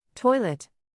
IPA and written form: ˈtɔɪ.lət (Toilet)